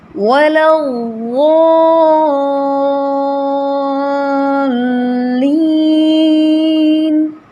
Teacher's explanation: اس کو لام کو موٹا نہیں کرنا، ولا ہی رہے گا، لیکن ضاد یہ موٹا ہو جائے گا